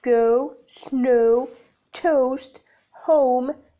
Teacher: Characteristics of /əʊ/ the glide begins in the position for /ə/ moving up and back towards /ʊ/ the lips are neutral that change you to loosely rounded as in go /gəʊ/, snow /snəʊ/, toast /təʊst/, home /həʊm/, hello /'heləʊ/ and although /'ɔːlðəʊ/.